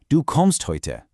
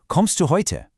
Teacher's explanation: Listen to the difference. First the statement. My voice falls. Now the question my voice rises.